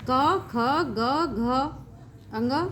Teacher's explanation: कंठ से उच्चरित होने के कारण इन्हें कंठ वर्ण भी कहते हैं।